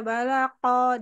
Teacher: bagus h-nya aja kurang alir yang di belakang sama Q balaqo jangan sama kayak Kaf jadi agak diangkat pangkal lidahnya